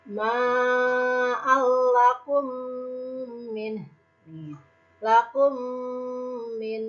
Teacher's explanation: Contoh hukum mim mati yang kedua yaitu idgham mutamasilen atau idgham misli, yaitu apabila ada mim mati bertemu dengan mim. Cara membacanya memasukkan mim ke dalam huruf mim disertai dengan suara gunnah.